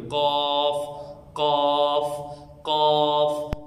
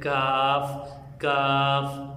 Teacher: قاف کی ادائیگی موٹی ہو رہی ہے، قاف قاف قاف، لیکن جو اس کے مقابلے میں کاف ہے اس کی ادائیگی باریک ہے